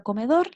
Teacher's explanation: en la palabra comedor, la sílaba que se pronuncia con más fuerza es dor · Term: sílaba tónica